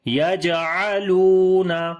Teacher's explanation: جیم کے اوپر قلقلہ کریں گے، یہاں پر واو کو لمبا کریں گے، واو مدہ ہے